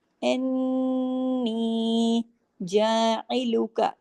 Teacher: نون کے اوپر تشدید ہے، نون پہ غنہ ہوگا